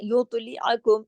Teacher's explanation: عین کو حلق سے پڑھیں گے